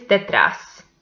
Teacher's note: the last syllable is the stressed one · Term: agudas